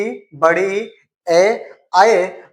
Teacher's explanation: जीभ के अगले भाग से जिनका उच्चारण होता है उनको अग्र स्वर की मान्यता देते हैं। और अग्र स्वर में आपके चार स्वर होते हैं।